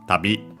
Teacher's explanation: Accent on the last syllable. On the last mora, it doesn't change here.